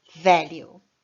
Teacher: mas aqui em inglês, value, a tônica é no começo